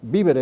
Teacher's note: se pronunciaba igual vivere con V que vivere con B